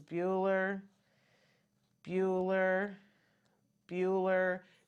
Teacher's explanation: no change and pitch intonation nothing just deadpan